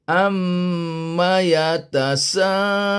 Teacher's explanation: mim sabdu juga adalah wajibul gunah kena dengungkan am sampai dua harakat